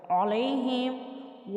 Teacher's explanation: لام کے اوپر زبر اور ساتھ یا ہے، یہ حرف لین ہے، اس لیے اس کی آواز کو کھول کر ادا کریں